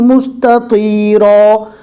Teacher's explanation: تو کو پور پڑھیں گے اور تا کو نارمل پڑھیں گے